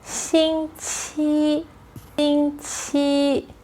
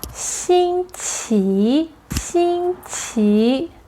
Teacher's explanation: But in Taiwan, people use 星期, 星期. The main difference between China and Taiwan is the second words, which need to be changed to second tone, rising tone, qi.